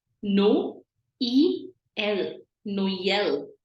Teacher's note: o and E coming together and we are pronouncing both the vowels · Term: trema